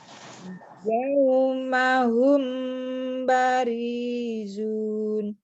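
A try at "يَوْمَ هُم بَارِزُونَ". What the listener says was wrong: P-nya pendek ya, Bu. Barizun.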